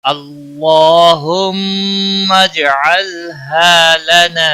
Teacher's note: جیم ساکن پر قلقلہ ہوگا · ہا الف مدہ ہے، ایک الف کے برابر کھینچ کر پڑھیں گے